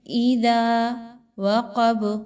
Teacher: اذا وقب، ذا پہ دیکھیں اور غا پہ دیکھیں تو الف مدہ آ گیا، 1 سے 2 الف کے برابر ان کو لمبا کیا جائے گا۔ وقب، اگین قاف ہے، پر پڑھی جائے گی۔